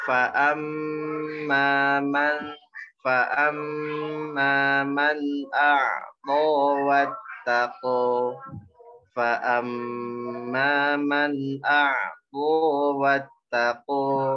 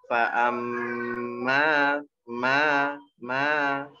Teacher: Fa'am ada tasdid, ada ditahan mimnya. Kemudian mimnya panjangin 2 harokat, huruf A-nya.